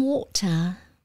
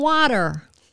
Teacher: it's not a t sound it's a d sound for american english